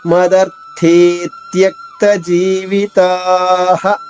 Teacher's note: జీవితా దీర్ఘంగా పలికిన తర్వాత హ అనే అక్షరాన్ని విసర్గకు బదులుగా పలకాలి